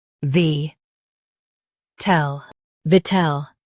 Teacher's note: Stress vit and keep ul soft.